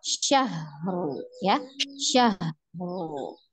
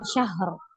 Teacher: dialirkan ha, jangan dipantul ya. Syahru ya, baru disukunkan ro-nya ya.